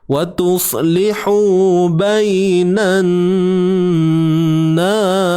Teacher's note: wajibul gunnah, wajib dengung pada nun.